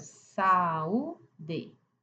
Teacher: Então o som é distinto, por isso que aqui ele não é de tomo, ele não fala junto, ele fala separado. Então aqui em saúde, dá uma mini pausa, abre o u três impulsos de voz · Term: iato